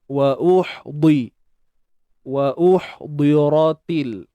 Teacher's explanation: Ha pedas ni matikan, kita sempit ya. Sempitkan tengah kerongkong. Huruf dad baris bawah tebal.